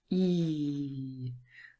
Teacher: it is produced at the front of our mouth. And also the tongue is quite high and our mouth is relatively closed. E. So say the sound and become aware of where your lips are, how your lips are formed, and where your tongue is. · So E is a front vowel sound, a front and closed vowel sound. That is because it is produced at the front of our mouth. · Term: long E